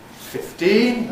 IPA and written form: ˌfɪfˈtiːn (fifteen)